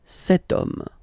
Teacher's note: as in French, H is not pronounced, so the first sound that we hear is O